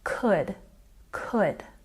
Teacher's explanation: don't say that L sound, it's silent